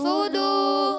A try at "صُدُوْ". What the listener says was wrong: موٹا کرنا ہے صاد کو. صدو.